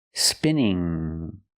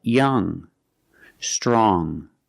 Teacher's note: when you see NG at the end of a word it makes a nasal sound it makes a sound in your nose like this there's no G sound